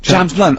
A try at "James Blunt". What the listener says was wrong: No, no, no, no, no, no. You said Jam's blunt, mate.